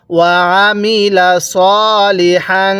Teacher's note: এরপরে ওয়া আমিলা, অনেকেই ওয়া আলিমা পড়ি বা ওয়া আমিলা পড়তে গিয়ে আমরা আইনটার মধ্যে চাপ দিই না, আইনটার মধ্যে চাপ না দিয়ে পড়ি, যার কারণে আইনটা হামজা হয়ে যায়। তাহলে আইনটা পড়ার সময় গলার মধ্যে চাপ দিয়ে পড়ব